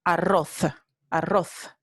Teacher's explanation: en el norte y centro de España esta palabra se pronuncia arroz, arroz, con la interdental fricativa sorda